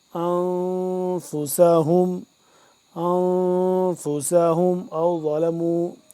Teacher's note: ذا کو موٹا کر کے پڑھیں گے